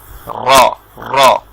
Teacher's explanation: আমরা আজকে পড়েছিলাম যে র, র উচ্চারণের স্থান হচ্ছে আপনার জিহ্বার আগার একটু ভিতরের সাইড, সেটা উপরের তালুর সাথে লেগে ভাইব্রেশন সহ উচ্চারণ হবে, এবং রা বলে কোনো শব্দ উচ্চারিত হবে না, হবে র, র।